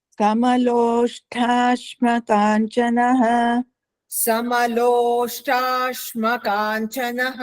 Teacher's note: ಲೋಷ್ಟ ಅನ್ನೋದರಲ್ಲಿ ಮಹಾಪ್ರಾಣ ಇಲ್ಲ ಅಲ್ಪಪ್ರಾಣ